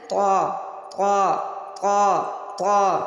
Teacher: ہماری زبان کی نوک اوپر والے دانتوں کے اندر جڑوں پہ لگے گی، ٹھیک ہے. تو طا موٹا والا طا ادا ہوگا.